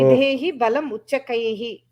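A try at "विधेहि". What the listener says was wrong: That is why dha is important. They if it was Videhi, it is different meaning.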